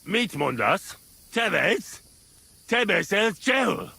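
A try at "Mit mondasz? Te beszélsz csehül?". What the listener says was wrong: That was almost good. You just need to press that N and hold that A correctly.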